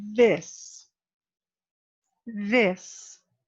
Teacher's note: you don't feel the air do you you feel a vibration back here right